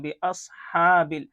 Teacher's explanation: اس بے اس، تھوڑا صاد کو موٹا کر کے پڑھیں گے. بے اصحاب، ہا کے اوپر کھڑا زبر ہے، کھڑا زبر کو ایک الف کے برابر کھینچیں گے